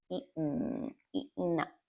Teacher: You can say eaten, but common English speakers will use what we call the glottal T.